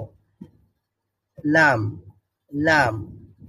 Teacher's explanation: লামের মাখরাজ হচ্ছে জিহ্বার অগ্রভাগের পার্শ্ব